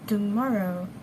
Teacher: the word tomorrow is pronounced as tomorrow in RP English with the alveolar plosive t sound at the initial of the word. However, in Indian pronunciation, the t sound is replaced by the retroflex k sound.